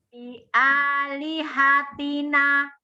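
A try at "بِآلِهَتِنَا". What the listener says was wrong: Nanya 2 harakat nih. Satu nih. Nanya ya. Bi alihatina. Nanya jangan tanggung ya. Ketika dia di akhir dia harus juga 2 harakat kalau mau tobina begitu ya. Jadi jangan jangan tanggung.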